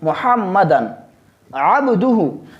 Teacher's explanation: यहाँ पे चूँकि नून तनवीन आया है और नून तनवीन में हमने बयान किया है कि वहाँ हम इख्फा करेंगे, लेकिन यहाँ हम इख्फा नहीं करेंगे, यहाँ हम इजहार करेंगे, क्योंकि नून तनवीन के बाद आइन आया है जो कि हुरूफ हल्की में से है